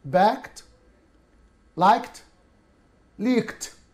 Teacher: ولاحظتوا كده الحاجات المنتهية اللي هي زي A و C و D منتهية ب E أو ED ولكن نسبقها ك sound voiceless فقلنا backed liked leaked تمام أصبحت كلها تنطق ك ت sound